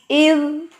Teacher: زبان کی نوک جو ہے ثنائیہ کے کناروں پہ رکھے